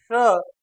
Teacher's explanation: तालू को स्पर्श नहीं करती तालू के पास जाती है इसलिए इस श का उच्चारण स्थान तालू है इसलिए ध्वनि नाम तालव्य हुआ